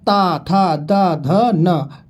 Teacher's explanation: दंत की बात करेंगे, ऊपरी दांतों के निकट से बात करेंगे